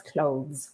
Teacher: And clothes finishes with a z sound, the voice sound.